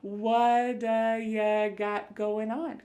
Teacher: that T at the end of the word what is going to change to a D sound. This is really typical of American English where a T that's surrounded by vowel sounds is going to change to a D. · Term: flapped T